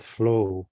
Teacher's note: And yeah, notice how the word flow, right? Flow, we naturally want to say it sort of slowly, right? That sort of closed off but long O gives us the same sort of imagery of a big, immense area.